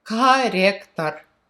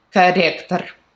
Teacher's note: Russian R's all hard, so you're gonna hear the hard R's everywhere